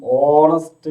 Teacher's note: ഹോണസ്റ്റ് എന്നുള്ളത് വായിക്കുമ്പോൾ ഓണസ്റ്റ് എന്നാണ് വായിക്കുക. അതിന്റെ പ്രൊണൗൺസിയേഷൻ ഓണസ്റ്റ് എന്നാണ്.